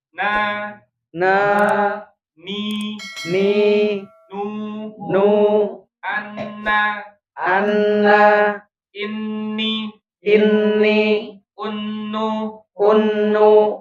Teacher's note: Makhraj utamanya jadi adalah ujung lidah bertemu dengan atau menyentuh dengan gusi atas.